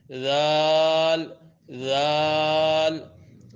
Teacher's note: ذال زبان کی نوک اوپر کے سامنے والے 2 دانتوں کے کناروں سے جب ٹکرے گی، ذال نرمی سے، زور نہیں، ذال ذال یہ حرف ادا ہوتا ہے۔